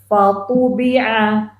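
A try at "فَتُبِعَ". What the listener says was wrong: Tipis fa-nya, fa.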